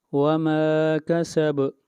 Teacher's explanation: با کے اوپر قلقلہ، با کے اوپر آواز کو ہلائیں گے